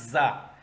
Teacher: ادا کرنے کا طریقہ یہ ہے کہ زبان کا سرا اوپر اور نیچے کے دو دانت کے قریب آ کے، زبان کا سرا اوپر نیچے دونوں دانتوں کے ساتھ ٹکرا کے یہ لفظ ادا ہوگا زا، اس میں سیٹی آئے گی